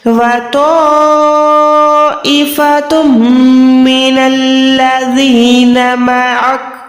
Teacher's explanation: تا 2 پیش کے بعد میم ہے، یہاں پر ادغام کریں گے گننے والا